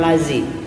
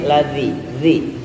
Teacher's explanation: Ujung lidah nempel ke ujung gigi seri atas.